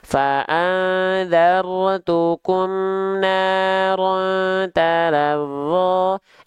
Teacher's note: harus kita tahan dengan 2 harokat kadar gunnah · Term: ikhfa